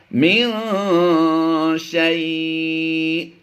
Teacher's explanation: شیء حمزہ ساکنہ کو جھٹکا دے کر پڑھیں گے، کیونکہ یہ ہم نے خود سے ساکن کرنا ہے، یہ سکون عارضی ہوگا.